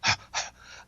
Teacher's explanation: much like a pant but with no voicing going you know like uh so it's a breathy sound but